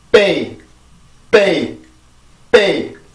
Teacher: 그래서 B 발음을 보면 양순 폐쇄 유성음입니다. 이렇게 입술을 막고 성대 울림을 같이 내보내주는 거예요